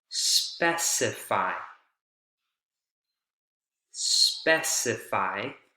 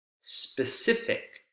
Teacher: the word stress shifts from the first syllable to the second syllable